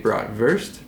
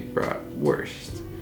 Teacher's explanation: in German you would say bratwurst because the W has the English V sound, and in American we say bratwurst.